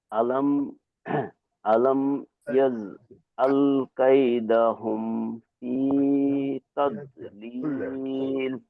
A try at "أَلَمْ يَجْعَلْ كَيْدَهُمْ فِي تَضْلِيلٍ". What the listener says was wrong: জি মাশাআল্লাহ, ঠিক আছে।